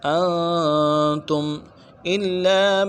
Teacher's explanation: تم میں میم ساکن ہے اظہار کریں گے کیونکہ الف حروف حلقی میں سے آ رہا ہے